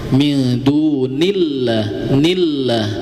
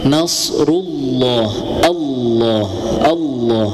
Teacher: pada lafaz Allah ya ini dibaca tebal ya karena ee sebelum lafaz Allah ada harakat dhammah. Dammah atau ee fathah itu dibaca ketika lafaz Allah itu dibaca ee tebal ya.